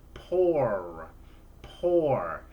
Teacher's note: ends with the er sound which does make a buzz at your vocal chords the r sound